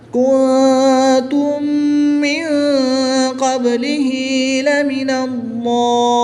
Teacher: مد لازم کو 3 سے 5 الف تک کھینچ کر پڑھیں گے